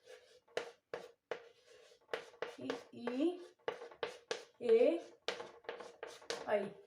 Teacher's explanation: अग्र स्वर में जीव का आगे वाला भाग काम कर रहा है